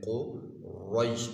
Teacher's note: اس رو کو یہاں پر موٹا پڑھیں گے، تفخیم بھی کہتے ہیں کہ اس کو موٹا پڑھیں گے، کیوں کہ اس کے اوپر زبر آ گئی ہے، رو کے اوپر زبر ہو تو اس کو موٹا پڑھتے ہیں قریش۔